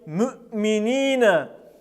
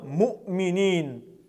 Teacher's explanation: Также необходимо отметить, что огласовка «и» с твердыми согласными произносится более твердо, нечто среднее между «и» и «ы». Однако огласовка «у» всегда произносится твердо, мы ее не смягчаем с мягкими согласными.